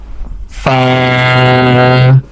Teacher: So for pronouncing F we are using our tip of upper two front teeth or you can say edge of upper two front teeth.